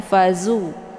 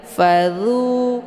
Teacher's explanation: posisi huruf dha ini yaitu di ujung lidah melekat dengan ujung gigi seri bagian atas · Jadi dia sifatnya hamas, maka anginnya itu agak samar-samar, tidak begitu jelas. Jangan ditekan, jangan fazu, ya.